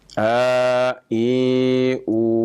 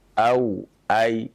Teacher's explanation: Maka kita baca, ya, yang mad tabi'i dengan 2 harokat, sedangkan yang huruf lin tidak dipanjangkan.